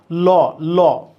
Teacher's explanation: জিহবা ভাজে এই দুই পাশ দুই পাশে দাঁতে লাগছে এজন্য ল কে বলা হয় পার্শ্বিক বর্ণ